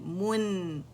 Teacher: मीम के खुश्क से पकड़ेंगे फिर गोलाई देंगे और फिर नून साकिन पे जब जाएंगे गोलाई ख़त्म हो जाएगी. यानी पहले हमने सर्कल बनाना है लिप्स का, ठीक है, दम्मा के ऊपर, और फिर उसे हम क्या कर देंगे, नॉर्मल लिप्स पर आ जाएंगे, ठीक है.